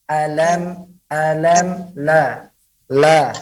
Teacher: huruf lam itu tidak keluar dari pada hidung dan dia keluar dari pada lidah menempel kepada gusi lah dengan juga melebarkan mulut nah jangan sampai masuk kedalam hidung